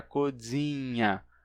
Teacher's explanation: O inha, o som de i, nasal inha, por ser o i uma vogal palatal, e nesse caso estar nasalizado, ele termina gerando uma consoante palatal nasal, então codzinha gera codzinha, que é o NH, e o Z se simplifica em Z, então fica cozinha.